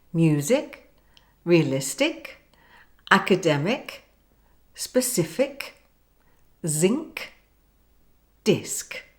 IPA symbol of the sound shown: k